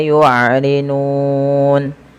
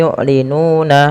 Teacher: Sedangkan misalkan kita lihat di sini yu'linuna, awalnya kan yu'linuna. Karena nunnya kita matikan dan kita wakafkan maka harus kita sukunkan. Nah, inilah yang dinamakan sukun arid, dan sebelum sukun arid ada bacaan mad tabi'i.